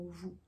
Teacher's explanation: Le son OU, la langue est plus en arrière.